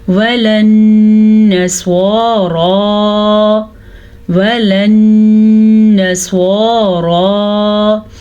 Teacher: نون کے اوپر شد ہے تو نون پہ غنہ پیدا ہوگا. سواد کو پر پڑیں گے اور را کو بھی پر پڑیں گے کیونکہ را کے اوپر کھڑی زبر ہے لیکن سواد ہر صورت میں پر پڑا جائے گا.